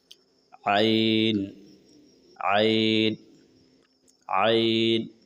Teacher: حلق سے پڑھنا ہوتا ہے، لیکن ہم لوگ اسے حمزہ کی طرح پڑھ دیتے ہیں